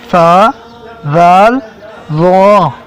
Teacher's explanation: ज़ुबान का सिरा और ऊपर के दांतों के अंदरूनी किनारे से अदा होते हैं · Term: हरूफ लसविया